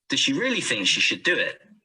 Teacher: so does needs to be joined to she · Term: weak forms